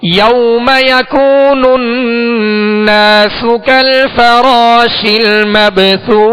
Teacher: اور مبثوث، یہ سا، دونوں سا جس میں وقف کیا جا رہا ہے، یہ آخری حرف بھی سا ہے تو سا کو ادا کرتے ہوئے نرمی کے ساتھ ادا کریں گے، سیٹی کی آواز اس میں پیدا نہ ہو